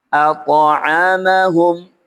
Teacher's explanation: Huruf ta di sini dibaca qalqalah, memantul kecil. Qalqalah sughra dan mengarah ke fathah.